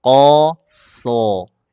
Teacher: Jadi cara menebalkan huruf sod itu tinggal dinaikkan pangkal lidahnya. Cara menaikkan pangkal lidah yang sering saya sampaikan dipancing pakai huruf qaf.